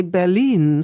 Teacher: we also emphasize the second syllable